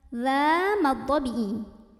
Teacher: cara membacanya dhal ini dipanjangkan 2 harokat, berhenti ataupun tidak berhenti.